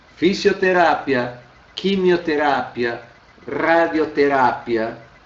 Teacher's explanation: as palavras que terminam em terapia em português acabam sendo terápia em espanhol tendo alterado a sua sílaba tônica